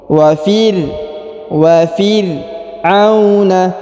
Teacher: ros dibaca tipis ya, ros sukun